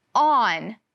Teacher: In the word on, the O says ah, like we learned in kindergarten.